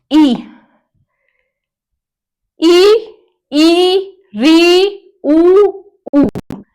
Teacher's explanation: जिन स्वरों का उच्चारण करते समय हमारा जो मुंह है वह बहुत ही कम मात्रा में खुलता है। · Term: संवृत स्वर